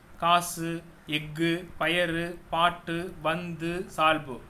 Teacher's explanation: கு சு டு து பு ரு இந்த எழுத்துக்கள் சொல்லின் ஈற்றில் வரும்போது தன்னுடைய ஒரு மாத்திரையிலிருந்து அரை மாத்திரை அளவு குறைந்து ஒலிக்கும் · வல்லின உகரங்கள் சொல்லின் இறுதியில் வரும்போது ஒரு மாத்திரைக்கு பதிலாக அரை மாத்திரை அளவே ஒலிக்கும். இவ்வாறு தனக்குரிய ஓசையில் குறைந்து ஒலிக்கும் உகரம் குற்றியல் உகரம் ஆகும். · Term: குற்றியலுகரம்